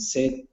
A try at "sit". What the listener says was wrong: let's practice the short I so instead of set instead of set raise the tongue I sit